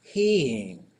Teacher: So the southern Tlingit on Sanya and Henya, when they have a long high vowel, it goes back down. That's the old way of the southern Tlingit is they would say heen. · So it has this kind of breathy fall at the end.